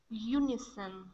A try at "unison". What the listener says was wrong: Okay, very nice.